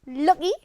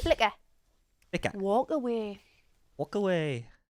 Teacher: We can also glottalize the K if it appears between two vowel sounds